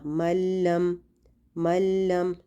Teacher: اسی طرح لم ایسے نہیں کرنا، ملم ملم، ٹھیک ہے، اس میں نون کی آواز بالکل نہیں آئے گی. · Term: بغیر غنہ